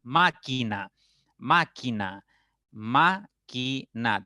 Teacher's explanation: tónica las demás van a ser sílabas atonas máquina máquina maquina tres sílabas y la mayor intensidad está en ma · 3 sílabas y la mayor intensidad está en ma. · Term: sílaba tónica